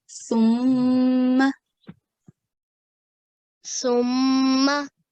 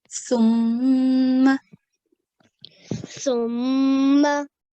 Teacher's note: tip of the tongue touches the tip of your front teeth, upper front teeth.